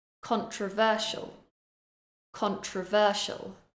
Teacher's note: I'm stressing syllable number three